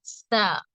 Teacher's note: நாவின் நுனிப்பாகமும் மேல் முன் பற்களின் பின்புற வேரை தொட்டு விலகும் போது உண்டாகிறது.